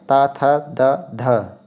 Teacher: ध जो है चौथा वर्ण है, तो ये महाप्राण हो जाएगा